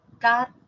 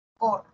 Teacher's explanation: La primera sílaba, car, cor, ¿no? La diferencia entre la A y la O. En cartas la A es central baja. Y en cor la O es media ¿sí?